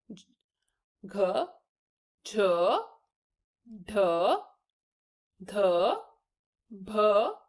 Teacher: चौथे वर्ण के उच्चारण के अंत में ह की ध्वनि उच्चारित की जाती है